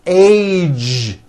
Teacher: It's not H, it's age with a voiced ending.